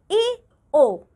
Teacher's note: अर्ध संवृत, जिन स्वरों का उच्चारण करते समय जीभ आधी सी ऊपर उठती है इन्हें अर्ध संवृत स्वर कहते हैं